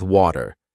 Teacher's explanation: in American English, the T sound in the middle of a word often sounds like a D?